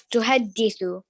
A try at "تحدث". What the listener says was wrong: Okay, just need the dal needs like a half a second extra. تحدث. تحدث.